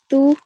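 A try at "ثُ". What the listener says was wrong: So again, don't say tu, it's th. Well, a slight amount of air needs to escape from your tongue while you're saying it. Thu.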